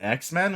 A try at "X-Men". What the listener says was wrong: It was like you said it like one word. You're like X-Men.